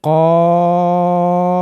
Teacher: আপনি একটু ভাবুন, আপনার জিবের দিক খেয়াল করুন, জিবের একেবারে গোড়ার দিক গিয়ে জিবের গোড়াটা ওপরে তালুর সঙ্গে লাগিয়ে দিন